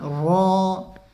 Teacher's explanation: रा को पुर करके पढ़ेंगे, मुंह भर के इसको पढ़ना है।